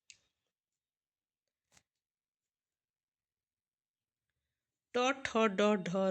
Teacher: इनका उच्चारण स्थान है मूर्धा